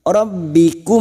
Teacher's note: Mir rabbikum, masuk pada huruf ba, rabbi, rabbikum, mim sukun bertemu waw. Mim sukun dibaca jelas tanpa mendengung idhar safawi. Mim sukun mendengung hanya bertemu dengan dua huruf, yaitu huruf ba dan huruf mim.